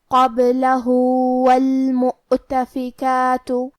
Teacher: آخری میں حرف الہا پہ الٹا پیش ہے. یہاں حکم ہے مد صلہ صغرا. ہم اپنی آواز 2 مد کے برابر لمبی کریں گے.